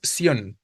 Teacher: El diptongo es sion, ¿no? Donde tengo la I y la O, débil y fuerte, y la tónica, pues es justo la O, o sea, ahí se encuentra la sílaba tónica en sion.